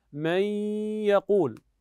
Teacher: النون ذهبت وبقي لها صفه الا وهي ماذا صفه الغنه